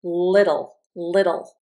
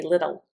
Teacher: L with the teeth and the tongue touching on the sides of the mouth. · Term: hard